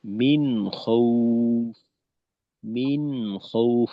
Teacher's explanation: মিন খউফ আওয়াজটা একটু চালু রেখে যেতে হবে যেন আওয়াজটা বন্ধের মত না হয়